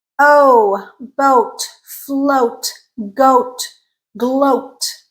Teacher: now we're in the middle in terms of tongue height we're at the mid mouth level · Oh, lip rounded. It's a tense sound.